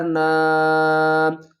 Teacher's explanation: چھوٹی مد ہے، 3 الف کی مقدار کھینچ کر پڑھیں گے، اور نون کے اوپر جو غنہ ہے نا اس کو بھی ہم ادا کریں گے۔